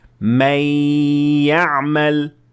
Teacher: یا کو نون ساکنہ کے غنے کے ساتھ ادا کیا گیا۔ غنہ کیوں؟ کیونکہ نون یا میں مدغم ہو گیا اور دونوں ایک ہی آواز بن گئے۔ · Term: ادغام